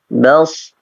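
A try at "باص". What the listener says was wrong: Ya, baik, kurang terangkat untuk pangkal lisannya.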